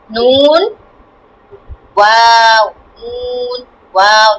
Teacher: নুন ওয়াও উচ্চারণ করার সময় ঠোঁট গোল করে উচ্চারণ করতে হবে